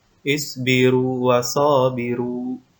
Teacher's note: tidak boleh di idghomkan atau dimasukkan kedalam mulut yang kedua melainkan termasuk ke dalam kaidah mad dan harus dibaca panjang sebagaimana mestinya